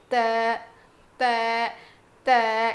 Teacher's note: زبان کی نوک کو سامنے کے دو دانتوں کے جڑ میں لگانے سے ادا ہوتا ہے